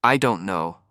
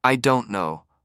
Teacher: consider the difference between saying I don't know with the stress on don't versus I don't know with the stress on no. The meaning can change slightly even though the words are the same.